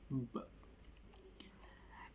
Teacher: Well, it causes due to our upper and lower lips touching together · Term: Bilabial